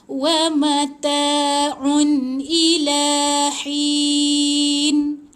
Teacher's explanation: Bila tanwin sebenar yang ditulis dalam Resam Usmani, Al-Quran ni, jadi baca jelas, touch and go, tak ada dengung, jangan tahan. Yang salahnya adalah kita baca macam ni, kita tahan. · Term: tanwin yang sebenar